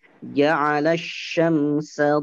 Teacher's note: Tidak ditekan tapi dipanjangkan dua harokat saja. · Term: mad iwad